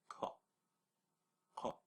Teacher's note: The hill, with the K and the dot underneath, the back K, made further back in the throat